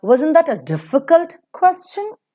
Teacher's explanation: When you are speaking, what is heard as a higher peak is wasn't, difficult, question. So they are stressed. The rest are reduced to their weak forms.